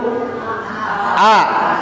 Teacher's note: Buka, istifal, lidah turun. Hanya A. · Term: hamzah